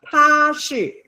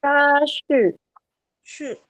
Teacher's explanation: First tone above your head, highest point in your voice range.